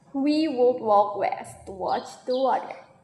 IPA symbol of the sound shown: w